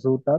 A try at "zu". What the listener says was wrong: আচ্ছা, এটা জু না এটা হচ্ছে সু উচ্চারণটা?